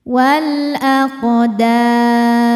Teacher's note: maka qof-nya kita pantulkan dengan pantulan yang kecil wal aqdam Saat berhenti di dam hukumnya mad arid lukun. · Qaf sukun dibaca qalqalah sughra ya, karena ada qaf sukun ya, sukunnya sukun asli dan ada di tengah bacaan. Maka qafnya kita pantulkan dengan pantulan yang kecil. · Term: qalqalah sugra